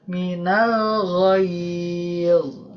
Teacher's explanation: minnya tidak ditasdidkan juga